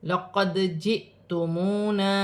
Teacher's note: دال ساکن ہے، حروف قلقلہ میں سے ہے